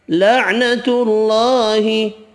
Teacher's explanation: اللہ کا نام والا لام تا والی پیش کی وجہ سے پر پڑھا جائے گا